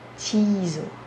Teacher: A parte da ênfase está no ti.